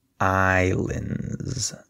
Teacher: notice that the S is silent so we say Islands there's no s sound